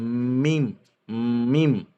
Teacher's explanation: दोनों होंठों के खुश्क हिस्से मिलाने से अदा होता है